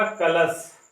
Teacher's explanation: एक शब्द होता है, आपने सुना होगा कलश, जिसमें दंती सा होता है, गलत होता है, बल्कि कलश में कौन सा सा रहता है, तालव्य सा। इसका ताल से होता है उच्चारण, इसका किससे होता है, दांतों से होता है।